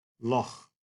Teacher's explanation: It is essentially a velar fricative, we say in linguistic language.